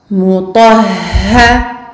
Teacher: on appuie sur le ha, on double le ha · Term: shadda